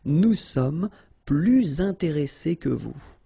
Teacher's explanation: And in that case, well, you make this little link, little liaison between the two, so you hear a little bit this S, okay? Nous sommes plus intéressés que vous.